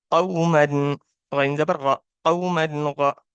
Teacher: حروف حلقی میں سے آ رہا ہے تو آپ یہاں پہ غنہ نہیں کریں گے